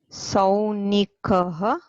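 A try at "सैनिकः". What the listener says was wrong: Not sau. It is sai. It is sainikaha.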